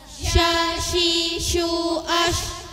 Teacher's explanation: dibaca dengan desisan yang tersebar keras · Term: Shin